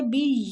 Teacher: یہ کو کھینچیں گے کھڑی زبر کی وجہ سے